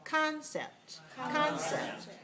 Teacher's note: So the first vowel is clear and stressed. And the second vowel is clear and unstressed.